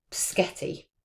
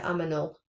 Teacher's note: reversal of the position of the two consonants. So there's two consonants and they've been reversed. Like they can be next to each other or they can be a little bit further apart within the word.